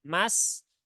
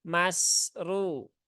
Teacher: mas sin sukun. Nah, ini dia punya sifat rokhawah, mengalir, ya.